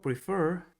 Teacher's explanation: la segunda sílaba es la que contiene el estrés o sílaba tónica por lo que en este caso la regla si aplica y